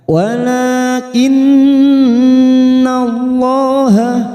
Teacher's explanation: berdiri atau alif kecil di sini, dua harokat kita panjangkan, walakinnallaha, nun yang bertasdid gunnah musaddadah, kita tekan 3 ketuk